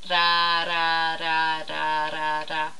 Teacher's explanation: And what you do is you use the tip of your tongue and you tap it just behind your teeth on the little bump that you find there behind your teeth. So find your bump behind your teeth there with your tongue. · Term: tap R sound